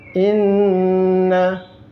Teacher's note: Inna, naknya depannya ada tasydid, ditekan.